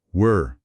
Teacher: tem um som fechado, é mais gutural. Ele vibra lá na garganta.